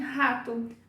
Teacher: Só que em português, o R no começo de palavras é H, como em rato.